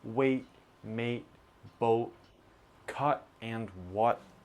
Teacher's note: we love to use the glottal T with words that end in vowel T.